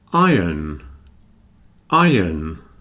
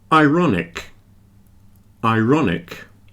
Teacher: You see, there's no R there. You can't really hear the R in iron.